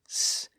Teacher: all consonant sounds then we have a group of sounds where the air flow isn't actually blocked but it's tightly constricted creating a hissing or whooing sound like the sound of letter s s and